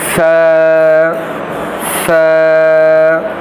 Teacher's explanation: ث، اس کو بالکل ہم نرمی سے ادا کریں گے۔ یہ جو ہمارے اوپر والے اور جو نیچے والے دونوں دانت ہیں، ان کے بیچ میں زبان کی نوک کو رکھ کر اس کو نرمی سے ادا کریں۔